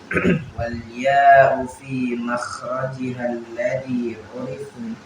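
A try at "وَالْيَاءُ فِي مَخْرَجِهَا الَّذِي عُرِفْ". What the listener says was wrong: Ainnya kurang dapat urif. Nah, wal ya'u fi makhrajiha alladhi 'urif.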